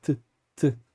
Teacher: um som mais curto e seco como t t com os a língua atrás dos dentes